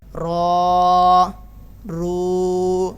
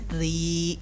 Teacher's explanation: رو، رو، دونوں موٹے پڑھے جائیں گے، ری یہ باریک پڑھا جائے گا